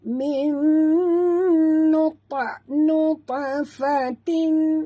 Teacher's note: huruf ta mati di tengah-tengah kalimah, ta bersifat qalqalah, jadi lantunkan dia.